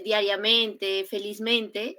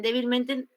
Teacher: esas palabras tienen doble acentuación